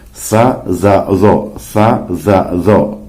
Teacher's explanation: Kemudian baina asnaniyah, ya, antara dua buah gigi. Jadi ujung lidah kena dengan bagian gigi atas dan gigi bawah.